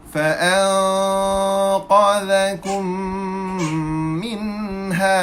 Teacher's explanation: Qaf adalah huruf isti'la, maka tuan-puan sekalian kita kena baca dalam keadaan tebal.